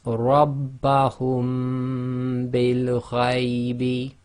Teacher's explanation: And effectively, you're not releasing your lips on the Meem. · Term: hiding